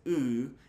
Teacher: It's a high back vowel, just like the vowel U.